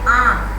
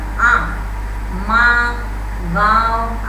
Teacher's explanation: आम मुंह से भी निकला और नाक से भी आवाज, आम, माँ, गाँव, आया आवाज, मुंह से और नाक से दोनों से आता है।